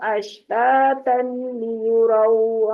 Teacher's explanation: اشتاتا لیروا میں ہے ادغام بغیر غننے کے